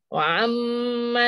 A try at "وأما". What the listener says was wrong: Ah, jangan, jangan wa'am. Wa'am jadi ain. Wa ammal ladzina amanu. Ama, jangan jangan tekan. Hamzah tak boleh tekan. Ha, nanti dia jadi ain.